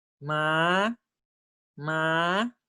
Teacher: the high tone from three to five